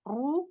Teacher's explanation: pangkal lidah naik sehingga arah suara ke atas. Setelah itu di mat-nya ee ee suaranya ke depan pas di panjangnya ya di ee ee di panjangnya di ru gitu ya itu pangkal lidahnya mulai dinaikin sehingga arah suara ke depan atau ke bawah. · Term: tebal